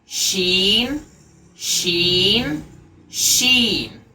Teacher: ज़बान का बीच और तालु का बीच, पूरे मुंह के अंदर शीन की आवाज़ फैल जाएगी और हमको पूरी ताकत के साथ में उसकी आवाज़ निकालनी है।